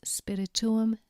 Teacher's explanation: the genitive plural ending has two u's, and these are pronounced separately